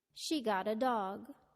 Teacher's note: In sentence 1, the intonation went down to indicate the completion of the thought.